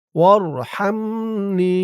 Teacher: নি ৩ আলিফ টান মধ্যে মুনফাসিল